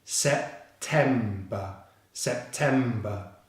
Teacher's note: September is a 3-syllable word with the stress on the 2nd syllable.